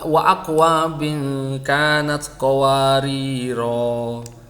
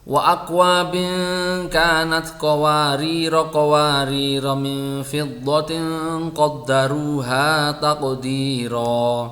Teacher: Qawarira alifnya ini dibaca panjang kalau dia waqaf atau berhenti. Jadi kalau sampean berhenti di sini membacanya wa akwabin kanat qawarira.